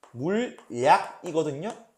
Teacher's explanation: 니은 첨가가 먼저 되고 니은이 먼저 들어오고 이 니은이 리을로 바뀌는 유음화가 일어나서 물약이 되는 거거든요. 이 경우에는 니은 첨가가 먼저 안 일어나면 유음화를 할 게 없잖아요.